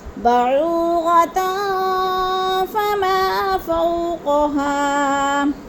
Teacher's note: فما کو بھی لمبا کرنا ہے اور فو کو بھی لمبا کرنا ہے، اور ہا کو بھی تھوڑا سا کھینچنا ہے · ایک فا میں سے آ گیا تو ادھر اخفا کریں گے، آواز کو ناک میں چھپا کر پڑھیں گے ، جیسے بعوغتن فما فوقها۔ فما کو بھی لمبا کرنا ہے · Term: الف مدہ